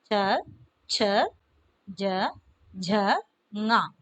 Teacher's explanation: इसका उच्चारण स्थान तो तालु है, सो इन वर्णों का नाम है तालव्य